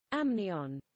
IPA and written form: ˈæmnɪən (amnion)